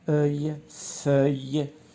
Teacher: On a le F plus le E qui est ouvert